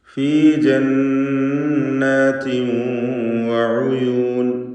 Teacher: താഇൻ്റെ തൻവീൻ ശേഷമുള്ള വാവിൽ ലയിപ്പിച്ച് ഇദ്ഗാം ബിഗുന്ന ചെയ്ത് ഉച്ചരിക്കണം. ഉയൂൻ, ഐനിൻ്റെ ദമ്മ് തെറ്റിപ്പോവാതെ, ഉയൂൻ ഒന്ന് ആയിപ്പോവരുത്, അവ്യക്തമാവരുത്, ശ്രദ്ധിക്കുക.